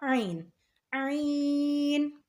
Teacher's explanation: حلق کے بیچ والے حصے سے عین ادا ہوگا